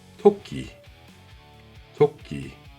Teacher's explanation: Le t initial avec un beau souffle suivi du sankyo tendu que vous connaissez déjà.